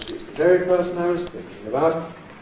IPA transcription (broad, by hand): ∣ She’s the ˈvery ºperson I was ͵thinking aºbout ‖